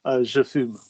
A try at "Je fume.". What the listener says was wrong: Nice high, nice low to high, je fume.